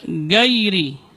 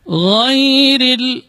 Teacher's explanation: dia termasuk rakhawah, huruf yang mengalir ketika pengucapannya. Ghairil, kemudian huruf ra-nya dibaca tarqiq, dibaca tipis karena berbaris kasrah.